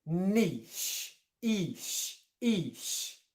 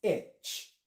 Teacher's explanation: we have a long E, and then we still get the sh on the end. So British English is niche, ish.